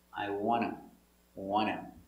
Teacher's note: This T is silent between two consonants